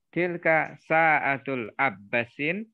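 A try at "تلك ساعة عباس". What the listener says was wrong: Sa'atu, jangan sa'atul ya, sa'atu.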